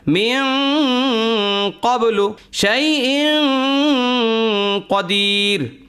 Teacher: যেমন মিন ক্বাবলু, এখানে নুন সাকিনের পরে কফ আসছে, কফটা ইজহারের মধ্যেও নাই, ঈদগামের মধ্যেও নাই, ইকলাবের মধ্যেও নাই, সুতরাং এটা হলো ইকফা, মানে অস্পষ্ট করে গুন্না সহকারে পড়বেন